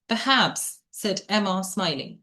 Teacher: Perhaps this R is not pronounced because it's followed by a consonant.